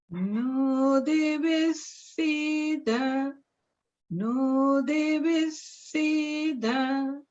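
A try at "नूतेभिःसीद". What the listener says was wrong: and notice the Maha prana bhit. Nutebhisida, Nutebhisida. Nutebhisida sadhanam, Anashranvannutebhissida sadanam. Jeshtarajam brahmarnam brahmarnaspata anash shrunvannutebhissida sadanam.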